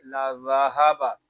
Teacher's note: اس میں سیٹی کی آواز نہیں آئے گی، اس کو نرمی کے ساتھ ادا کریں گے